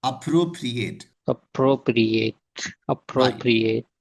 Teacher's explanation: It has four syllables and generally here we are giving a stress over the second syllable.